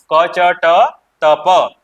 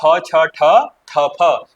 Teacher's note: ये हमारी होती है अघोष।